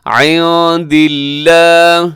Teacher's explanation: لفظ اللہ باریک ہے کیونکہ اس سے پہلے لام، لفظ اللہ کے لام سے پہلے دال کے نیچے زیر ہے